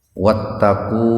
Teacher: Domah bertemu wau sukun. Jadi dibacanya mad itu panjang. Panjangnya itu thobi'i ya biasa dua ketukan. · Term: mad thobi'i, madtabi'i